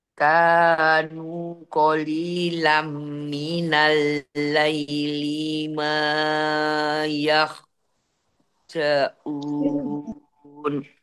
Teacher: Qalilam idgham bi gunnah masuk langsung masuk mim.